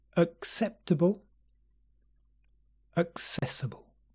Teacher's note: And notice the first 2 words begin with schwa.